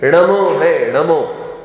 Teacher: ण बोलने पर जीभ में हल्का सा खिंचाव आ जाता है, इसलिए थोड़ी कठिनता मालूम पड़ती है। · और णा जो मूर्धन्य वर्ण है, वो णा का समझ लो। ये णा बोलने पर जीभ की नोक का पिछला भाग तालू से लगकर रगड़ता है